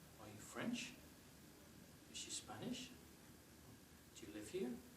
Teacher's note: typically when we're asking a question we go up at the end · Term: typical intonation